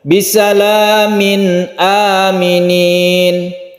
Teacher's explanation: ada hop maka kita namakan dengan izhar halqi izhar artinya jelas suara dari nun mati atau tanwin itu dibaca jelas dengan huruf N